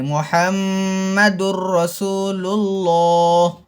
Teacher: میم میں غنہ کرنا چاہیے، ہونٹوں کو بند کر کے ناک سے آواز آنا چاہیے۔